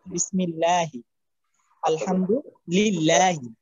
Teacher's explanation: আল্লাহ শব্দের আগে জের আসে, জের আসলে পাতলা করে পড়তে হয়